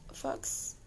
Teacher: the letter x as in fox is really a combination of the two sounds k and s